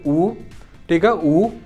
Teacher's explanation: ऊ और ऊ जो है वो ओष्ठ से बोले जाते हैं, आपके होंठों से। जैसे आप कहेंगे ऊ, ठीक है, ऊ, तो इस तरीके से वहां पर ओष्ठ की जरूरत पड़ेगी, गोल हो जाते हैं, ठीक है।